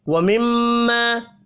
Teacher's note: میم مشدد پر غنہ کریں گے، الف مدہ کو 1 الف کے برابر کھینچ کر پڑھنا ہے۔